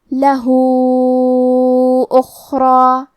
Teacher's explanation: کلمت لہو کے آخری میں ہا پہ الٹا پیش ہے اور اس پہ مد کا علامہ ہے، یہ مد صلہ کبریٰ ہے، اس مد میں ہم اپنی آواز 4 مد کے برابر لمبی کریں گے